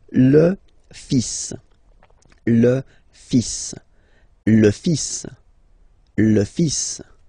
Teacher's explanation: even if you've got this L, well, basically you don't pronounce it, and then strangely you pronounce the final S.